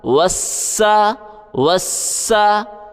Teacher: سین کے اوپر تشدید ہے، سختی کریں، سیٹی کی بھی آواز نکالیں، بیچ میں الف نہیں پڑھا جائے گا